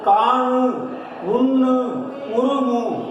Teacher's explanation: அப்போ காணு, உண்ணு, உருமு என்பது, நூ என்பது என்ன எழுத்து, மெல்லின எழுத்து. அப்போ மெல்லின எழுத்துக்கு மேல் வரக்கூடிய உகரமானது ஓசை குறுகாது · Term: முற்றியல் உகரம்